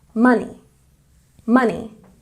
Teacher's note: Money has a stress on the first syllable